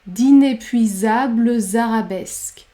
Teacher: on va prononcer le E à la fin du mot inépuisable, puisqu'il y a deux consonnes devant, B et L, et la consonne phonétique Z après.